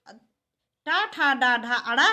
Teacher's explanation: ये टा, ठा, डा, ढा, अड़ा या षटकोण वाला श, जब हम इसको बोलते हैं तो हमारी जीभ तालु के ऊपर वाले भाग को स्पर्श करती है। इसीलिए री, टा, ठा, डा, ढा, अड़ा का उच्चारण स्थान मूर्धा है।